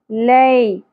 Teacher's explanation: یا ساکن حرف لین اور نرمی سے ادا ہوگا